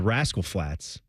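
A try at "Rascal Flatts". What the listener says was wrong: The Rascal Flats. emphasis on. Usually, people go Rascal Flats. You emphasize the Rascal.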